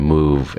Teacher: And then finish that V sound, move. And the top teeth touch the bottom lip on the V